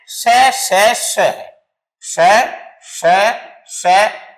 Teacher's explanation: जब प्राण वायु बाहर तो निकले लेकिन कुछ संघर्ष के साथ निकले यदि उसको थोड़ा संघर्ष करना पड़े जीभ का कहीं न कहीं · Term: संघर्षी व्यंजन